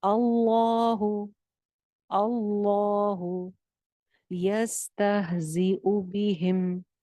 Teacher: اللہ لفظ جلالہ موٹا ہے کیونکہ حمزہ کے اوپر زبر نظر آ رہی ہے